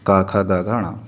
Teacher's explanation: इसमें सर्वाधिक गले का ही प्रयोग होता है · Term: कंठ वर्ण